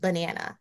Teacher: So in banana, the weak syllable is the first syllable, the ba.